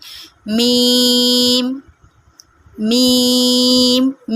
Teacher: मीम को हम 3 अलिफ के बराबर खींच कर पढ़ते हैं और उसके आखिर में मीम की आवाज़ आती है।